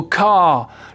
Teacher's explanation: le mot car on va presque pas l'entendre à la fin si on a un accent britannique